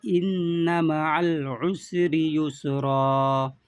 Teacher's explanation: नून के ऊपर तशदीद है इसलिए गुन्ना करेंगे।